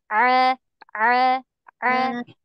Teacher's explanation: Ain itu di atas, di tengah tenggorokan. Jadi ini tenggorokan ya, tenggorokan kita.